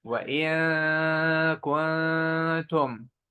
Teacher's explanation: So kaf and ta are light letters. So the ghunna is light. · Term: light ghunna